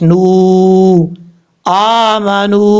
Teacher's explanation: اب اس کے بعد ہے آمنوا وعملوا الصالحات، حمزہ کے اوپر کھڑا زبر ہے، ایک الف کی مقدار لمبا کر کے پڑھا جائے گا۔ اب نون کے بعد واو مدہ ہے، یہاں پر بھی ایک الف کی مقدار لمبا کیا جائے گا